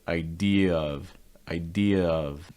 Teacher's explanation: they kind of run together with linking so adding a slight yeah sound between idea and of · adding a slight y sound between idea and of, idea of. That's kind of the linking that you get, idea of.